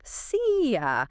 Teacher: See you very often becomes the clipped seea. That e sound flows right into the y.